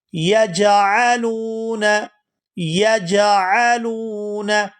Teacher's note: لام کو واو ساکن کے ساتھ ملائیں گے تو کھینچ کر ادا کریں گے